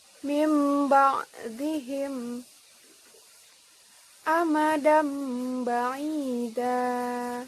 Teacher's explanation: abdun ya yang ketiga adalah iqlab Apa itu iqlab iqlab adalah apabila nun mati atau tanwin bertemu dengan huruf ba maka cara membacanya bunyi nun mati atau tanwin diganti dengan bunyi mim sukun